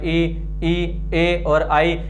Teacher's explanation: जिह्वा के अग्र भाग में हल्का सा उठाव आता है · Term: अग्र स्वर